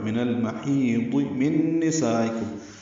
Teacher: ہی یا مد ہے وسط حلق سے ہا ادا ہوگا. بہت پر پڑھیں گے، محیزی نہیں پڑھنا.